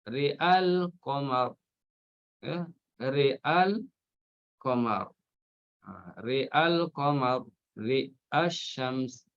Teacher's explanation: Jadi ada huruf mati, maka Syatibiyah dan Thayyibah di sini akan baca imalah ra dan fathahkan hamzah. Dan hazafkan alif ketika wasal satu wajah saja.